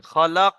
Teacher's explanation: লাস্টে কফটা কলকলা হবে